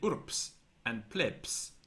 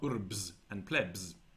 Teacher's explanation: this clearly indicates the assimilation of B to P before S. So Romans said urps and plebs and not urbs and plebs, and so on.